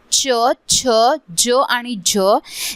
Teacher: दात आणि तालू यांच्या मधील जो भाग होता त्यांचा मी वापर करून या वर्णा चा उच्चार केलेला · जेव्हा मी या ध्वनींचा उच्चार केला तेव्हा दात आणि ताळू यांच्यामधील जो भाग होता त्यांचा मी वापर करून या वर्णांचा उच्चार केलेला, आणि जेव्हा पण मी याला उच्चार केला तो मी अ लावून केलेला, म्हणून हे झाले दंततालव्य.